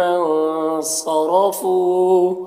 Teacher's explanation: صاد حرف مستعلیہ میں سے پر پڑھیں گے، را کو پر زبر ہے، را کو بھی پر پڑھیں گے۔ فو میں واو مدہ ہے، 1 الف کے برابر کھینچیں گے، اس طرح سے۔